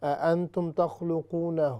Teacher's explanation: جو آگے ہا ہے، ضمیر ہے، یہ لمبی ہوگی، اس کو زیادہ لمبا کرنا ہے نہ کہ تخلقو کو۔